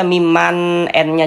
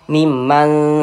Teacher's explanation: Bunyi nun sukunnya ini dibaca samar. Jangan dibaca mimman. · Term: ikhfa hakiki